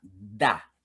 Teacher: Jadi dal dalam bahasa Arab itu ujung lidah kita menyentuh akar gigi bagian belakang. Da. Bukan dah.